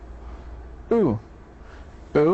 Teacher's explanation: it's in the back of the mouth and close to the roof of the mouth